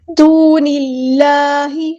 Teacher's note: اللہ کا جو لام ہے یہاں پہ باریک پڑھیں گے کیونکہ کسرہ یعنی زیر آئی ہے